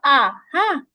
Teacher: হামজা জবর আ এখানে কোন কন্ঠ চাপানো লাগবে না